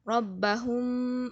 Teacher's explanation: Apabila mim mati bertemu dengan huruf ba, maka kita akan merapatkan bibir tanpa tekanan yang kuat dengan mengekalkan sifat dengung mim. Maksudnya kita rapatkan bibir. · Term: ikhfa' syafawi